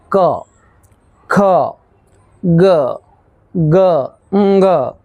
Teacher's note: અહીં તમે નોટિસ કર્યું હશે કે આ જે 5 જે મૂળાક્ષરો છે, 5 જે વ્યંજનો છે એને તમે જ્યારે બોલો છો ત્યારે અવાજ જે છે, હવા જે છે તે ગળામાંથી આવે છે, કંઠમાંથી આવે છે, એટલા માટે જ તેને કંઠ્ય વ્યંજનો તરીકે ઓળખવામાં આવે છે।